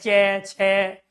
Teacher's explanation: स्पर्श तो यह है ही लेकिन इनमें घर्षण भी होता है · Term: स्पर्श संघर्षी